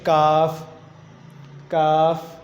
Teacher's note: آپ نے تالو کو بھی نہیں لگانا اور جہاں سے قاف پڑا تھا وہاں سے بھی نہیں پڑھنا. زبان کی جڑ سے تھوڑا سا آگے منہ کی طرف آ کے وہاں سے آپ ادا کریں گے کاف